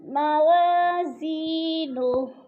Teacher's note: الف خالی سے پہلے واو کے اوپر زبر ہے, الف مدہ ایک الف کے برابر کھینچ کر پڑھنا ہے